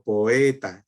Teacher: es un hiato dos vocales seguidas en diferentes sílabas